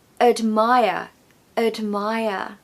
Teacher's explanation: we haven't got a strong vowel sound in that first syllable because the second syllable is stressed